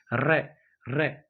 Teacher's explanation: वायु जिव्या के ऊपर से लुड़क हुई बाहर निकलती है उसे लुंठित व्यंजन कहा जाता है क्योंकि इस वर्ण का उच्चारण करते समय जिव्या जिव्या में कंपन भी होता है